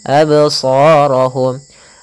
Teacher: bacaan Qalqalah Apa itu Qalqalah Qalqalah yaitu memantul Maka jangan dibaca absorohum harus ada pantulannya absorohumah Adapun pantulannya pun jangan sampai terbaca dengan adanya hamzahah tidak